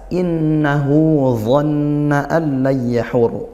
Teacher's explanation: nun bertasydid kita baca ghunah. Didengungkan hu ini mad silah qasirah. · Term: gunnah